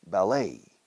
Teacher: We stress the last syllable, a little bit of a French style with English pronunciation.